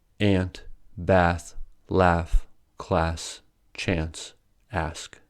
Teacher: In America, however, they are all pronounced with the /æ/ sound